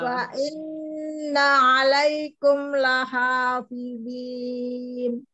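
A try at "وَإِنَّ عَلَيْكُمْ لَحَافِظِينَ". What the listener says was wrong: Lahafidzin. Wa-nya mau ya. Ada ini tebalkan dikit. Lahafidzin. Inna 'alaikum lahafidzin.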